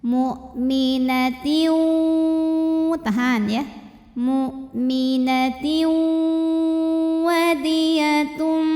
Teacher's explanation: Tiu ada hukum idgham bi gunnah karena ada tanwin kasrah yang menghadapi huruf waw. Maka tanwinnya masuk ke waw disertai bunyi dengung.